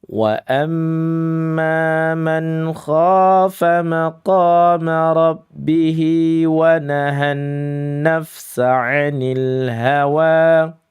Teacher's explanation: Wanya mad thobi'i atau mad asli dua harakat saja.